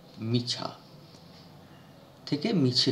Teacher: আ স্বরধ্বনি এ তে পরিণত হয় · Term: প্রগত স্বরসঙ্গতি